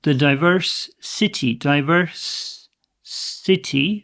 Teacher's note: So we have two S sounds here. We only need one.